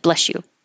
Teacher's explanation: um it's usually pretty quick and it sounds like bless you because the S and the Y next to each other will make the sh sound so it Blends together